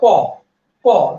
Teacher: ক উচ্চারণ করার সময় বাতাস কিন্তু আপনার হাতে লাগবেই না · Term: অল্প প্রাণ